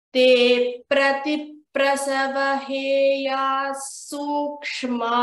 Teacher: you know how to join this visarga and then we see a sakara. We need to join it with a double sa.